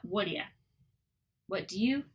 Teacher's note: And the T flattens to the D sound.